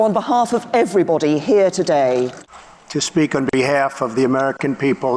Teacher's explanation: americans will tend to use a more front vowel sound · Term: bath vowel